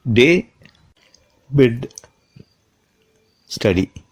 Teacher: This consonant is pronounced as D in English. The sound is made through the mouth. It is voiced. The local cord is vibrated to make this sound.